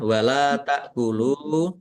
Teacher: lam fathah alif mat tabi'i panjang dua harokat. Ta'kulu hamzah sukun ya dibaca ringan.